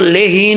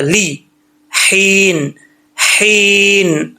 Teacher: लाम ज़ेर ली होता है, ले नहीं होता, ली, हीन, हीन, हा ज़ेर, हा ज़ेर या, ही, इसको लेहीन नहीं पढ़ना, हा बरीक है, इस हा का ताल्लुक हल्क से है, सीने से नहीं है, हीन, ओके।